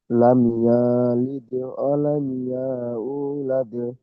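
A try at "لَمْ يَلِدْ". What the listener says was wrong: বলে টান দিচ্ছেন, ইয়ার উপরে যাবার আছে।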